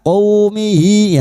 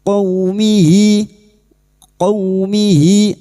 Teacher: fathah bertemu waw sukun kita lunakkan huruf lin seperti bertemu dengan huruf abjad u, jangan dibaca qaumihi ya, jangan qaw, qaumihi, qaumihi.